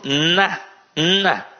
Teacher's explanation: o som fica o quê nasalizado então o próprio na na ele é nasalizado o som também sai pela narina